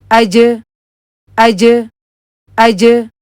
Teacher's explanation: जीम के लिए आपकी जुबान जो है वह ऊपर को उठती है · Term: कलकले की आवाज